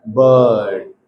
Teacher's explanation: a central vowel occurring between half closed and half open line · So the center of the tongue is raised towards the hard palate